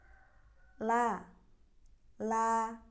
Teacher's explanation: Tepi lidahnya dari sini ke sini sampai ujung, pertemukan dengan gusi-gusi bagian atas. Huruf lam ini merupakan huruf tipis, jadi pengucapannya tidak diangkat pangkal lidah tidak diangkat ke langit-langit.